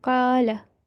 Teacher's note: do not prolong the fatha on lam.